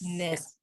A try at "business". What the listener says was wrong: Business. 2 syllables, right?